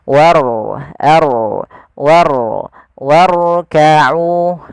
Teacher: huruf rnya dibaca dengan ro tafkhim yaitu ro yang tebal · Warkau itu rnya tipis tapi diangkat ujung lidahnya untuk menebalkannya · Pada lafal warka'u di sini ada huruf ro yang ditandai dengan warna biru tebal, menandakan huruf ro-nya dibaca dengan ro tafkhim, yaitu ro yang tebal.